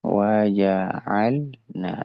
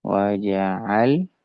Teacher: lam yang mati ini disebut dengan lam fi'il. Dia berada di tengah tengah kata. Maka ini mutlak dia dijelaskan huruf lam sukunnya.